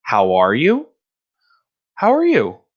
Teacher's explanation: all these have a rising intonation so towards the end you're gonna hear the emphasis